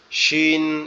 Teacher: শিনের উচ্চারণটা হবে শিন, দুই দাঁতের পাটি একসাথে চেপে লেগে থাকবে, আওয়াজটাকে একটু শক্ত হবে, শিন, এরকম ভাবে।